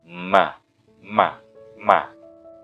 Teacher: merapatkan kedua bibir disertai gunnah dari rongga hidung